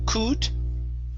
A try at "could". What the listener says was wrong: open your mouth up when you're pronouncing that vowel.